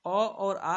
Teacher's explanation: अ और आ किसे बोले जाते हैं? कंठ से बोले जाते हैं, इसीलिए इसको हम लोग बोलते हैं कंठ स्वर